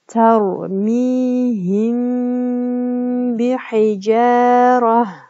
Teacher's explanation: мим тамгасы ба тамгасына жолугуп жатат жана ошол эле учурда гунналуу окулат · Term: ихфаи шафави